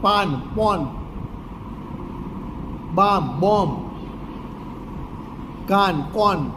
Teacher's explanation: શબ્દનો પ્રથમ અક્ષર આકારાંત હોય તો એ આકારાંતની જગ્યાએ વિવૃત અ બોલે છે.